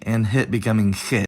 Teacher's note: if it’s followed by one of the close high vowels, either [i] or [ɪ], then the /h/ will actually become more pronounced, as [x] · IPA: [xit̚]